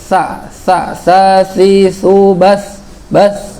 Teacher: Kalau sa di ujung banget paling depan bertemu dengan gigi seri